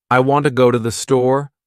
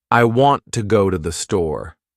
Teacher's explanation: The words want, go, and store are stressed. The other words I, to, and the are much faster and softer. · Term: stresstimed language, stress-timed language